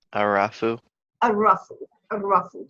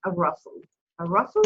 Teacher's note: So the word is rough, and you were right, we have alif lam at the beginning. Ra is a sun letter, so we're not going to pronounce the lam, so it's pronounced rough.